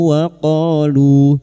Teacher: qof fathah diguti alif dua harakat mad thabi'i. Lu duma diguti wau sukun.